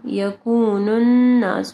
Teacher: نون مشدد ہے یہاں پہ غنہ ہوگا